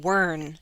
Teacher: If I dropped the T, I'd get wern, and I'd hold out the N. So I'm not dropping the T.